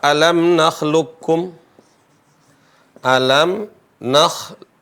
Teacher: Seolah-olah qaf tidak dibaca, tapi yang bertasdid adalah huruf kaf. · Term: idgham